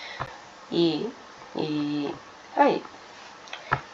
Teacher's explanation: ಕಂಠ ಮತ್ತು ದವಡೆಯ ಸಹಾಯದಿಂದ ಹುಟ್ಟುವ ಅಕ್ಷರಗಳು ಯಾವುದು ಇದು ಎರಡು ಕಡೆ ಸಪೋರ್ಟ್ ನ ತಗೊಳ್ಳುತ್ತೆ ಅಂದ್ರೆ ಒಂದು ಗಂಟಲು ಇನ್ನೊಂದು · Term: ತಾಲವ